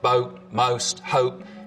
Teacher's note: the vowel sound in boat most hope starts with the tongue further forwards in the mouth. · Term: goat fronting